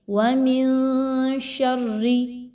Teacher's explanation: نون کی آواز کو کلیئر نہیں پڑھیں گے بلکہ ناک میں چھپائیں گے۔ وَمِن شَرِّ، اس طرح سے پڑھا جائے گا۔ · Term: اخفا